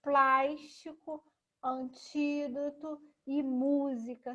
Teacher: Vocês podem perceber que a sílaba tônica é o mu, o ti e o plás